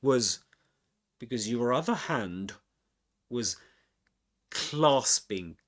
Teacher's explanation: was is pronounced with schwa sound here